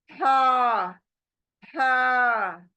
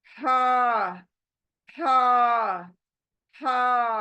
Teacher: Arabic में कैसे पढ़ोगे हा हलक के बीच से आना है इसको हा अपनी उंगली हलक के बीच में लगा दो गर्दन के